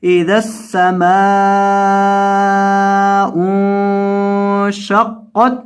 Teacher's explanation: क़ाफ ज़बर ताक़त, क़ाफ को ता के साथ मिलाएंगे और क़ाफ को पुर करेंगे